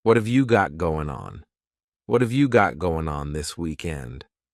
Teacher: That final G in the word going is going to be cut off and we'll just say going.